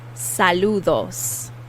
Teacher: that d is also the soft th sound kind of a d